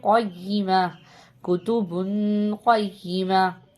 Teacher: قیمہ قوف ہے موٹا کر کے پڑھیں گے